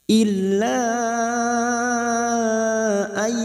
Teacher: Nun sukun bertemu ya idgham bi gunnah. Masuk dan mendengung masuk ke huruf ya dan mendengung selama 2 atau 3 harokat. Kita sesuaikan tempo pada saat kita membaca.